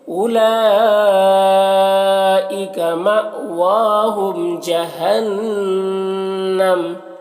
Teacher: ہم کے میم میں اظہار شفوی ہو رہا ہے، اسے جلد پڑھنا. جہنم نون مشدد غنہ ہوگا · لام جو مد ہے یہ مد متصل ہے، اسے 3 4 الف کے برابر کھینچ کر پڑھتے ہیں. مأواہم یہاں پر حمزہ ساکنہ ہے، جھٹکا لگے گا. واؤ میں کھڑا زبر ہے، اسے ایک الف کے برابر کھینچیں گے. · اولئک یہاں پر واؤ کو نہیں پڑھنا ہے، واؤ میں کوئی حرکت نہیں ہے. لام جو مد ہے یہ مد متصل ہے، اسے 3 4 الف کے برابر کھینچ کر پڑھتے ہیں